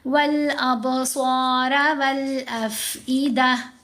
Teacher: لام پڑھی جا رہی ہے، الف سائلنٹ ہے